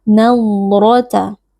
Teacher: Huruf dot memiliki sifat rakhawah. Jadi ketika sukun, huruf dot kita berikan sedikit aliran suara. Jangan diputus, nadrata, atau jangan diqalqalahkan. · Huruf ra, huruf tafkhim kita baca dengan mengangkat pangkal lidah karena di sini ra-nya berharakat fathah.